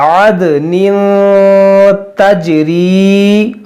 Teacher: दाल एक हर्फ़-ए-क़लकाला है और साकिन है, इसलिए हम इस पर क़लकाला (अद) करेंगे, और एक तनवीन है, फिर तनवीन के बाद ता है, जो एक हर्फ़-ए-इख़्फ़ा है, इसलिए हम यहां इख़्फ़ा का नियम लागू करेंगे और ग़ुन्ना करेंगे।